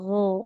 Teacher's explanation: Nah, jangan go ya tapi gho g dia lebih mengalir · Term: huruf ginnya